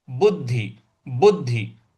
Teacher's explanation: जो ब के आगे जो आधा द है उस पर हमको आघात देना है